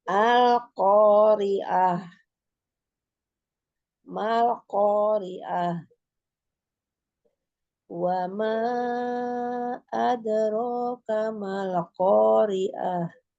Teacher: ada huruf ta marbutah ya yang ketika dia disukunkan akan berubah menjadi h